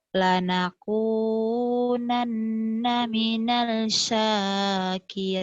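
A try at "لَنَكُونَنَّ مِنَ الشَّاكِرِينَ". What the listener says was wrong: Lanakunanna minas. Jangan mina kan alif lamnya nggak dibaca. Minas. Minas. Kan alif lamnya nggak ada tanda. Yang dibaca itu kalau alif lamnya ada tanda nih.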